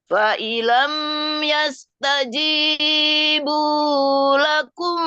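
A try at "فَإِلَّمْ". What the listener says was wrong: Fa'ilam biar jelas tasdidnya.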